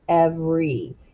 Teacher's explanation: most people in kansas where we live say every and the e is completely silent